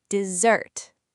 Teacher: The stress is on the second syllable and the s makes a buzzing z sound